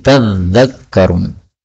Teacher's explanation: Yang pertama pada ayat 152 tadzakkarun, ini dzalnya boleh ditasydid maka menjadi tadzakkarun